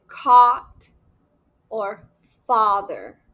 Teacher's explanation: this a sound has the tongue low and back and my lips are relaxed.